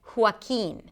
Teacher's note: you start with an H sound, hua, close your lips and then open it up for a W sound, hua, and then keen, a K sound, a high E, and an N, Joaquin.